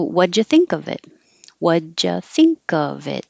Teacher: when you have a d and a y next to each other they make a j